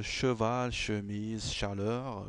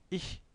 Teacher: Mais c'est un, c'est un, c'est un son assez, c'est un che, bien sûr, mais assez fin